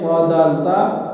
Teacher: یہ مسوڑوں سے ان سے جب زبان لگ جاتی ہے تو اس وقت یہ طا دال تا ادا ہوتے ہیں